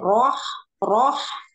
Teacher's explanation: ketika kita mengikut sertakan bibir itu akan terdengar roh roh terasa gak ada seperti r o a h roh gitu